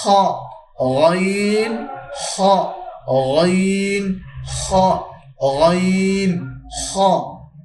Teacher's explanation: হালকের শেষ ভাগ হইতে 2টি হরফ উচ্চারণ হয় গাইন এবং খ।